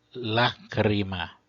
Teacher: A primeira sílaba é longa por posição, porque eu tenho o A seguido por duas consoantes que são o CR.